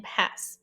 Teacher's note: The S between phonemic brackets is S. It is voiceless alveolar, as in pass.